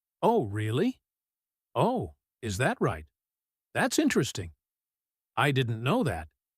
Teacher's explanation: These expressions are often said with a slightly rising pitch at the end, a gentle questioning surprise rather than a sharp reactive one.